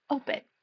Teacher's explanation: Open has first syllable stress.